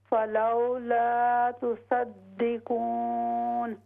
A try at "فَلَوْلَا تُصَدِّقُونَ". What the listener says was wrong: ہاں یہ ناک سے آواز نہیں آئے گی، تو صدقون کی بجائے تو صدقون،